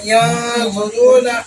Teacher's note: نون کی آواز کو ہم ہائٹ کر دیں گے، یعنی چھپا دیں گے